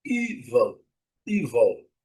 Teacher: A primeira sílaba é a letra e que é pronunciada como um I bem longo. Evil.